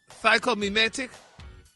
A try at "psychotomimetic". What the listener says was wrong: Put all the syllables in there. psychotomimetic.